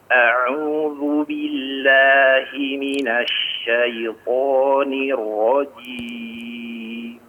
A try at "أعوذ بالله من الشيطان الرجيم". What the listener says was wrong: Huruf dzalnya ditipiskan ya, lebih ditipiskan, agak menebal. A'udzu, dzu.